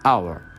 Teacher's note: The word hour have no sound of H. So instead of hour, we say hour.